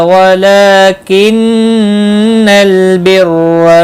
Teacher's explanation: لام کے اوپر کھڑی زبر ہے، ایک الف کے برابر کھینچ کر پڑھیں گے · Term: غنہ